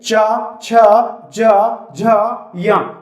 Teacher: चा वर्ग को जब आप पढ़ोगे तो आपका जो जीभ है वो तालव्य की तरफ जाएगा, टकराएगा नहीं, मूर्धन्य से टकराता है, तालव्य की तरफ जीभ जाती है।